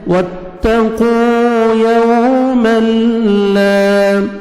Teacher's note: واو لین ہے، نرمی سے ادا کریں گے، لپس کو رو میں لے کے جائیں گے تاکہ واو اچھی طرح ادا ہو